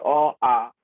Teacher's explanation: কণ্ঠ থেকে সোজাসুজি চলে আসছে, কোথাও বাধাপ্রাপ্ত হয়নি। কণ্ঠ ধ্বনি বা কণ্ঠ বর্ণ কিংবা জিহ্বামূলীয় বর্ণগুলি, জিভের মূল একেবারে ভেতর দিকে আছে, সেখান থেকে উচ্চারিত হচ্ছে, সুতরাং জিহ্বামূলীয় বর্ণ বলছি বা কণ্ঠ ধ্বনি বলছি বা কণ্ঠ বর্ণ বলছি।